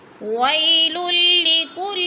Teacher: وی پہ وولین ہے، اس کو لمبا بھی نہیں کرنا اور جھٹکا بھی نہیں دینا